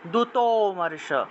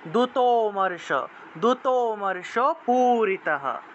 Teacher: লুপ্ত অ এর উচ্চারণটা আসলে মানে হালকা অ এর মত উচ্চারণ হলেও এটা পূর্ণ অচ্চারণ হবে না অর্থাৎ দুতমর্ষ দুত ত উচ্চারণ করলে এই যে অকার যে উচ্চারণ